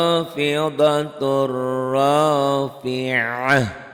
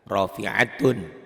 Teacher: Tamar butoh berubah bunyinya menjadi ha jika dihentikan. Kalau enggak dihentikan enggak jadi ha, tetap ta ya.